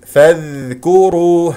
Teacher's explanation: الكاف والراء نضم الشفتين فيها لانها مضمومه ونضم في الواو والراء انتبه مفخمه لانها مضمومه فاذكروا الله اسم الجلال الله مفخم